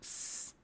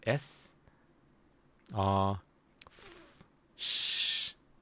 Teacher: If you speak the word s or f, sh, there's no vibration.